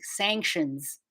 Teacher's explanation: at the end of sanctions you want to make sure your s sound is vibrating